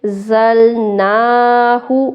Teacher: زا سیٹی والے حروف میں ہے اس لیے اس کو سختی سے پڑھیں گے۔ زلناہ، نون پہ کھڑا زبر ہے کھینچیں گے، ہا پہ شو کو نہیں کھینچیں گے۔